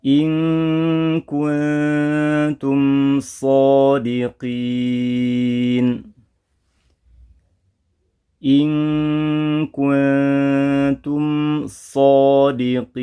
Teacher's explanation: Dua-duanya dibaca dengan menyertakan hukum gunnah, menyertakan gunnah panjangnya 2 harokat.